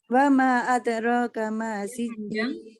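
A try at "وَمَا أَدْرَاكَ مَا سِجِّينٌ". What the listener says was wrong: Ulangi wama, ma-nya panjang wama.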